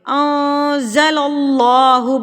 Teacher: نون ساکن کے بعد حروف اقفا میں سے زا آ گیا ہے, تو یہاں پر ہم اقفا کریں گے